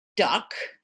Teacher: it's not an unstressed vowel. It's a stressed vowel. It's a stressed central vowel, okay, that looks very much like an unstressed vowel, but because there's only one syllable in duck and you stress that syllable, it becomes a stressed vowel.